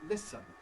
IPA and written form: ˈlɪsən (listen)